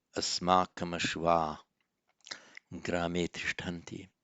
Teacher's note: The only substantive change is that the ashvaha, followed by the voiced consonant grame, g, it just loses its visarga. So asmakam ashva grame tishtanti.